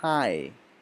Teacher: It's not like hi. When you say hi, your mouth begins with ah and then it moves towards E, so it becomes high. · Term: double vowel sound